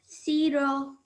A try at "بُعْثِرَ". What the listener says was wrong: So just remember not to say the s sound. It's a th, very soft sound.